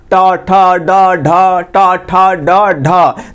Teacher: तालु के ऊपर जो गड्ढवा है ना ऊपर उसी में जाकर टन टन जाकर मार रहा है, मुड़ा हुआ प्रतीत होगा, तो ये हो जाएगा ट ठ ड ढ। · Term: मूर्धा